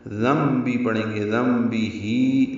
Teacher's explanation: وجہ سے یہ اقلاب یا ابدال ہوا ہے، اب نون کی آواز کو بدل دیا اور میم پڑھیں گے نون کی جگہ